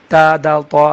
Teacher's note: زبان کی نوک جب ثنایا علیہ کے جڑ پہ لگتے ہیں، تا، دال، طا ادا ہوتے ہیں